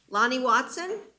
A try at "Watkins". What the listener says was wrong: Watkins, ma'am? No, you said Watson.